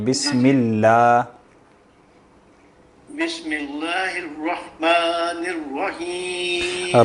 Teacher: لفظ جلالہ چونکہ پیچھے زیر ہے نا تو اس کو باریک پڑھیں گے